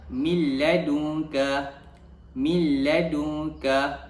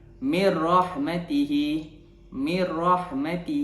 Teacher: memasukkan bunyi nun mati tersebut ke dalam huruf lam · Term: idgham bilagunnah